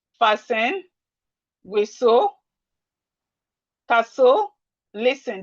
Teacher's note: The T in these words are silent. So please take note.